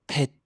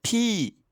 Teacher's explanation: Il ne faut pas le prononcer F. Celui-ci, c'est comme la lettre P en français, mais il faut souffler fort en même temps. Mettez votre main devant la bouche et vous devez sentir un bon pof d'air. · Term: p aspiré, le p aspiré